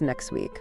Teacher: sometimes sounds even disappear completely, like the T in next week, which becomes next week.